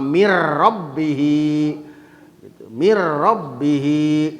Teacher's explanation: idghamkeun sadabari teu make gunah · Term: idgham bila gunah